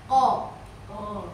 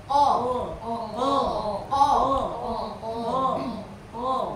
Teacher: pangkal lidah kita nempel ke daging di atasnya Q Q nempel dengan kuat dan bulat